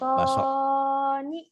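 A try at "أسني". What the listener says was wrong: Ninya panjang non. Asoni.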